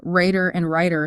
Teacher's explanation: in other regions Raider and writer sound exactly the same they've merged